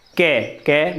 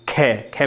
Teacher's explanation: के में कम वायु निकली, खे में थोड़ी ज़्यादा निकली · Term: अल्प प्राण